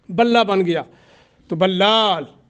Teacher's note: لام کو لام نے مدغم کر دیا، ٹھیک ہے، بلا بن گیا۔ تو بلال، لام کو ایک الف کے برابر لمبا کریں گے، لیکن بلا یہ غلط ہوگا، غنہ نہیں کرنا۔